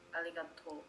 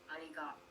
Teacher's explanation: you exert a little extra puff of air to pronounce the second O